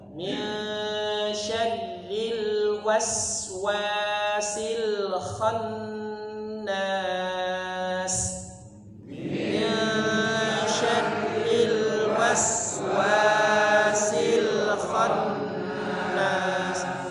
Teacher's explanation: 3 harokat, dipanjangkan. Nunnya bertasydid maka dipanjangkan 3 harokat. · khannas itu lebih panjang daripada waswasil. Wa-nya cuma 2 harakat. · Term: dengung